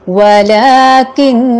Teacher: نون مشدد کو جب ہم نے اکیلے یعنی وقف کر کے پڑھا تو بھی نون کو مشدد ہی پڑھا اور اس پہ غنہ ہی کیا